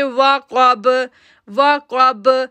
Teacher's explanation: کاف جو ہے وہ موٹا لیٹر ہے، با جو ہے وہ کلکلا لیٹر بن گیا کیونکہ با کے اوپر زبر کو ہم نے جزم میں تبدیل کر دیا. تو ہم پڑھیں گے وقب وقب.